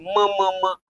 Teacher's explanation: अगोदर हवा तोंडातून नंतर नाकातून बाहेर पडते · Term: अनुनासिके